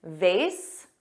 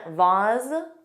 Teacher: vase, which rhymes with face, and vase, which has an ah but a z sound, both are used in American English, which is interesting because vase is the American pronunciation and vase is the British pronunciation.